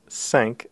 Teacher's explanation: cinq, The number cinq is yet another nasal vowel, so a little bit different from un. It's a slightly higher nasal vowel, un, and so we pronounce cinq, again feeling a vibration in the area of the nose rather than down in the throat.